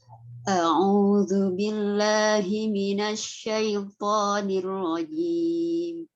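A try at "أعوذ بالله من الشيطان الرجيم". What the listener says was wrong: Hamzah sama ainnya. kurang mencucu. Harus disempurnakan harokatnya.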